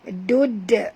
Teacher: Dud, bunyikan, lantunkan bunyi pada dal kan qalqalah surah.